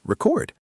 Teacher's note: If you stress the second syllable, it means to write something down.